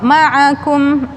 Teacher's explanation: Ma'akum ain, a di tengah tenggorokan